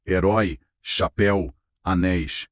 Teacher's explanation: Nessas a força está lá no final. Elas são oxítonas.